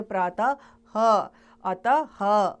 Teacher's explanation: अह की ध्वनि को विसर्ग कहा जाता है इसका उच्चारण ह की तरह आता है